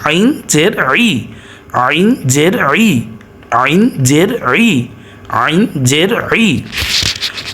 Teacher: সবসময় হলকের মধ্যখান থেকে উচ্চারিত হয় আইন। যদি এটা হলকের মধ্যখান থেকে উচ্চারিত না করেন তাহলে হামজার সাথে, যেমন আইন জের ই যদি পড়েন হামজার সাথে মিলিত হয়ে যাবে।